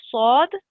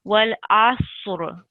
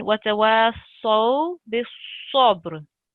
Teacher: So lips out when we say sad. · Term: thick sound